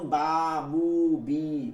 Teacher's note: 16 number মাখরাজ মুখের খালি জায়গা মুখের খালি জায়গা জফের মাখরাজ মুখের খালি জায়গা হইতে মাদের হরফ